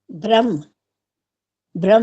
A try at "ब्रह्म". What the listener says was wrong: गलत है ये। ब्रह्म, अंत में म पूरा बोलो, ब्रह्म।